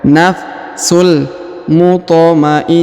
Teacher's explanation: Huruf tho ya maka kita pantulkan atau kita qalqalahkan